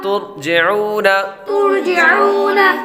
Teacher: واو ساکن سے پہلے پیش ہو تو واو مدہ ہوتی ہے، اس لیے حروف مدہ کو ایک الف یعنی 2 حرکات کے برابر کھینچ کر پڑھیں گے۔